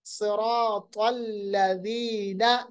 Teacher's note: ذال کو نرم پڑھیے گا، زبان کی نوک ثناء علیہ کا کنارہ، ذال کا مخرج · صاد اور طا موٹا، را کو بھی موٹا پڑھیں گے، حالانکہ را حروف مستعلیہ میں نہیں ہے.